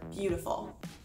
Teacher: are stressed the next kind of meter is called a dactyl this includes one stressed syllable followed by two unstressed syllables